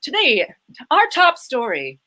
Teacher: And it's all rounded vowels. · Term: mid-Atlantic accent